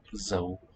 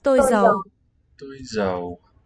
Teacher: The hiding one had a rising tone, also the hat-shaped thing on the A.